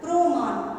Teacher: শব্দের শুরুতে র ফলা যুক্ত ব্যঞ্জনের সঙ্গে অ ও ধ্বনিতে পরিণত হবে